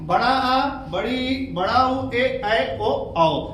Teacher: ऐसे वर्ण जिनका उच्चारण करने में 2 गुना समय लगे या ह्रस्व से अधिक समय लगे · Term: द्विमात्रिक स्वर